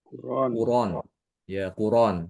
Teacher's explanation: jadi hamzahnya harakatnya itu dipindahkan ke ro sementara hamzahnya menghilang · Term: dinakal